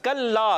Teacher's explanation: कल्ला, काफ को बारीक रखना है। कल्ला, काफ का मखरज ज़बान की जड़ और तालु का सख्त हिस्सा याद रखना है।